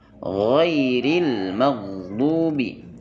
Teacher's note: gain dibaca dengan sifat rakah mengalir dia tapi mengalirnya di sini tidak berdesis melainkan jahr sifatnya